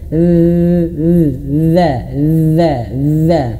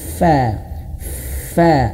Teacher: Kalau huruf dalal itu mengalir suara bukan angin ya. Tapi kalau huruf fa itu angin.